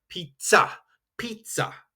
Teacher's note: So that z actually is more of a tz or ts. · this is a hard attack on the Z. It's not that soft